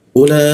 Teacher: la panjang bertemu hamzah kita panjangkan tiga ketukan